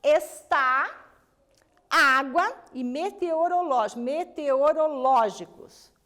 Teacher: Veja que o está acentuou na última, o água acentuou na penúltima e o meteorológicos acentuou na antepenúltima. Aqui é a primeira de lá para cá, aqui é a segunda de lá para cá, aqui é a terceira de lá para cá.